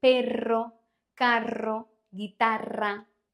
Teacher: this sound is produced by multiple taps of the tongue